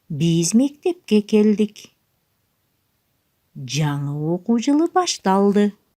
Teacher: Жай сүйлөм айтылганда сүйлөмдүн башында үн бийигирээк, сүйлөмдүн ортосунда бир аз тыныгуу жасалып, сүйлөмдүн аягында үн акырыныраак айтылат.